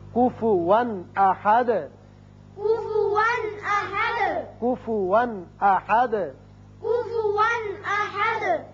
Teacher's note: یہاں کفون 2 زبر تنوین ہے لیکن آگے حمزہ بشکل الف آ گیا جو کہ حروف حلقی میں سے ہے، لہذا یہاں اظہار حلقی ہوگا.